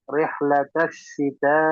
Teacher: rih pakai ha dari tengah tenggorokan